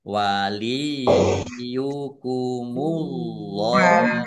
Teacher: Allahnya dibaca tebal karena harakat di depannya domah. Lam fatah berdiri mad thobi'i panjang dua harakat.